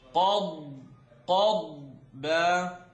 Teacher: It's qaf at the back, dad at the sides. Qad, and the air has to really fill up here because the dad needs to be heard.